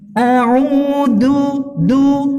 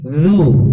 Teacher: Tempatnya atau makhrajnya ada di ujung lidah, agak keluar sedikit, ditempelkan dengan ujung dua buah gigi bagian atas atau ditempelkan dengan ujung gigi seri bagian atas ya. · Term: zal